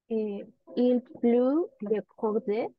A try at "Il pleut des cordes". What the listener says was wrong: Il pleut des cordes. Des cordes, no prononciamos las últimas dos letras. Il pleut des cordes.